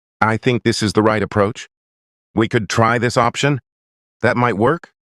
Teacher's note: Most people don't realize this, but they speak in questions. Even when they think they're making statements, their voice rises at the end of a sentence. Their tone floats instead of landing. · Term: rising tone